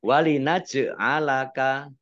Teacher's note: jim sukun bacaan qalqalah atau memantul ditampakkan pantulannya